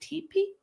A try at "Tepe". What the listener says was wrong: Tepe, I think. Tepe. Not with a long E, I don't believe.